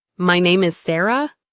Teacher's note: That's the upward or downward turn at the end of a sentence. A questionlike inflection on statements, my name is Sarah, makes you sound uncertain. A downward inflection, my name is Sarah, sounds clear and confident.